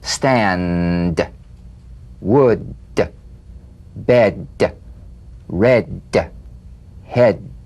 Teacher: play this d drumbeat on the springing away of the tongue from the upper gum Ridge feel a pulsation in the tongue yeah tap the drumbeat d